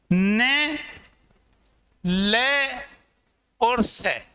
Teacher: न, ले और से, यद्यपि इन तीनों को दंत्य व्यंजन माना गया है, लेकिन जो शोध हुआ, नई रिसर्च हुई, उसमें इनका उच्चारण स्थान मसूड़े मान लिया गया है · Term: वर्तस्य व्यंजन